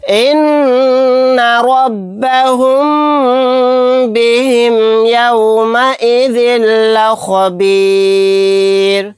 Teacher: نون کے اوپر تشدید ہے، یہاں پر غنہ کر کے پڑھیں گے۔ را کو موٹا یعنی پر پڑھیں گے، میم ساکن کے بعد با آ گیا تو یہاں پر بھی غنہ کر کے پڑھیں گے